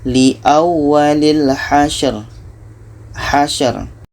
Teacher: Ra ini tawassut, mesti kita alirkan.